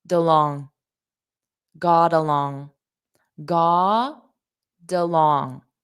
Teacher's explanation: We have t between two vowel sounds. So I'm going to connect those together with a soft d. And it will sound like god along.